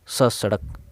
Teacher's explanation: फिर है दंत्य यानी कि दांत से, जैसे स सड़क, ये दांत पर स्पर्श करके बोला जाता है इसलिए इसे दंत्य कहते हैं